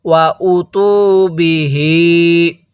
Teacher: হামজায়ের মধ্যে টান দিব না, তায়ের মধ্যে এক আলিফ টান দিব।